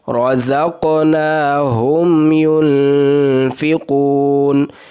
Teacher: میم ساکن ہے، اس کو اظہار کے ساتھ پڑھنا ہے، یہاں پر رکنا نہیں ہے۔ ہم ینفقون، جبکہ اگلا جو نون ہے نون کے اوپر غنہ کرنا ہے۔